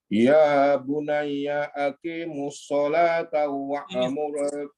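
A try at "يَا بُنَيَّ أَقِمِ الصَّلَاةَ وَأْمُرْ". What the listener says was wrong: Aqimis salata, bukan aqimus, aqimis.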